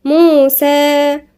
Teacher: خلي بالنا نركز إنه في هنا ألف صغيرة مد طبيعي مقدار حركتين، ما نقولش موسى ونسكت، لأ موسى لازم نبين إنها مد طبيعي.